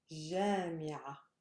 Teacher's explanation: Again on the first syllable. Because the last syllable is heavy, the one preceding it is light, so my stress goes to the first syllable.